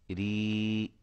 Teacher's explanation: یہ را کے نیچے کھڑی زیر ہے، اس وجہ سے یہ را باریک ہو رہی ہے